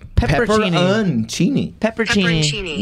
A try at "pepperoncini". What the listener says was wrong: No, you're skipping one still. Pepperon. It's pepperon.